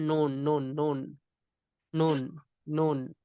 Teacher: तो ये जो दांत है ना, वो जो शार्प दांत अभी बताया ना, तो उसके जो ऊपर के मसूड़े है ना, तो मसूड़े को जबान का किनारा लगाने से नून निकलता